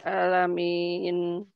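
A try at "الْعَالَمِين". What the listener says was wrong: Nah, alirkan sedikit ya. Jangan kebanyakan. Jangan al-alamin. Oh, jadi gunnah itu. Kebanyakan. Atau dia berhenti suaranya. Nah, berhenti. Jadi dialirkan sedikit. An gitu ya.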